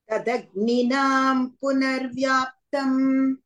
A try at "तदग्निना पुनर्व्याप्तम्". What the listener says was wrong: अग्निना, not nam. There's no anuswar.